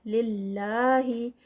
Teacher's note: للہ لفظ جلالہ اس سے پہلے زیر تو اس کو لائٹ ادا کیا جائے گا اور 2 کاؤنٹس کا اسٹریچ.